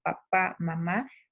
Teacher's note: mis labios están juntándose para producir ese sonido de P, B, M, ¿sí? Por eso son bilabiales.